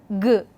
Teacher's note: G is velar, voiced, stop.